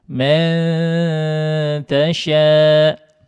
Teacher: Nun sukun bertemu dengan huruf ta didengungkan